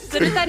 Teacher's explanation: huruf vokal A dalam perkataan sedutan digantikan dengan huruf vokal U menjadi sedutun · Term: penggantian